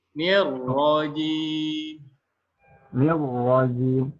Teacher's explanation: Ro-nya sedikit ditebalkan lah ya, dengan dialirkan juga.